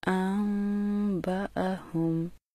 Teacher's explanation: چھوٹی میم پر بھی ہمیشہ غنہ کیا جاتا ہے، لیکن ہونٹوں کو نہایت نرمی سے ملاتے ہوئے، جبکہ میم شد کے غنہ میں ہونٹوں کو کچھ مضبوطی سے ملایا جاتا ہے، جیسے فَلَمَّا أَنبَأَهُم۔